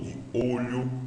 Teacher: E ômega, som fechado de O, de olho, né? Então, essa coisa mais fechada.